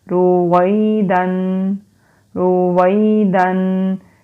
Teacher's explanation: یا سے پہلے واو کے اوپر زبر ہے، یہ حروف لین ہے، اس کو کھینچیں گے نہیں، نرمی سے پڑھیں گے